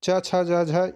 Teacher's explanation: क्योंकि जिन व्यंजनों के उच्चारण के समय जब हम किसी व्यंजन को उच्चारण कर रहे होते हैं तो जिह्वा का अग्रभाग जो है वो कठोर तालु से संपर्क करता है, कठोर तालु को स्पर्श करता है, तो उसे हम तालव्य व्यंजन कहते हैं। तो इसलिए च छ ज झ जो है वो उसका उच्चारण स्थान जो है वो तालु से है।